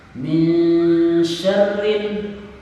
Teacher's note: dipastikan huruf ro yang keluar getarannya minimal 2 getaran. Hukum ro-nya adalah 2 getaran.